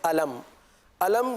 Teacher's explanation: यहां पर मीम को जाहिर करके पढ़ेंगे यानी गुन्ना नहीं करेंगे